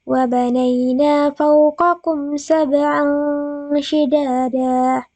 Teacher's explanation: Nah, dia didengungkan. Kemudian huruf N-nya itu berubah menjadi NG. Jadi dia samar. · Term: ikhfa